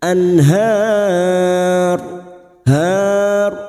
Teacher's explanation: Tahtihal an nun sukun bertemu ha idhar halki. Nun sukun dibaca jelas tanpa mendengung.